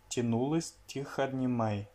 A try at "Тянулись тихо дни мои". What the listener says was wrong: Тянулись тихо дни мои. Alors là, pour тянулись, tu as un peu trop allongé le ou. Tu as fait ce qu'on appelle en phonétique une voyelle longue. C'est comme si tu avais dit тянулись. Alors non, c'est juste тянулись. Тянулись.